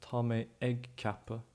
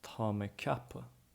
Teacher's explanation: So an egg, again, when it's used as a verbal noun for doing or saying, in this case thinking, the G is dropped